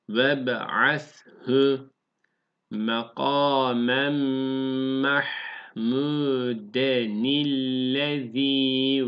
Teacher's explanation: Mahmuden diye demiyoruz. N'ye de hareket veriyoruz. De ni. De burada zaten gördüğünüz gibi burada yazılmış altta.